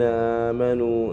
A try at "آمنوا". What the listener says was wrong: كلمة آمنوا فيها مد. مد. كلمة آمنوا فيها مد. مدها.